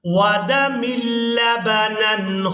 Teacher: میم کو لام مشدد کے ساتھ ملائیں گے